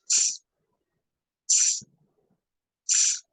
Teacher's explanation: Entonces, el sonido de la S vendría a ser s, s, s, una especie de soplido seco, sin sonido, como un soplido